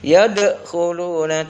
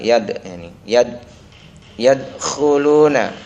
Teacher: Dal mati kalau berada di tengah-tengah Bacanya adalah Qalqalah sugro tidak boleh dibaca memantul